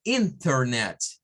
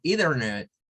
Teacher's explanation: una n y una t y después viene una vocal se puede omitir el sonido de la t · se puede omitir el sonido de la T. No es necesario decirlo. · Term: se omite el sonido de la t